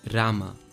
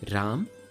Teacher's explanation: Notice how Sanskrit adds an A sound to the end of each letter, while Hindi does not. Almost like there is a halant on the end of each letter.